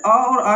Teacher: अ और आ की बात करें तो कंठ से बोला जाता है